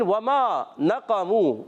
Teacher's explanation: तो प्यारे बच्चों और मदनी चैनल के नाज़रीन, वमा नक़मू वाव की अदायगी होती है होठों की गोलाई से